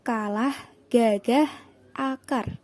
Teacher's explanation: Yang keempat, konsonan hambatan velar K dan G dihasilkan dengan menempelkan belakang lidah pada langit-langit lunak. Udara dihambat dan dilepas secara tiba-tiba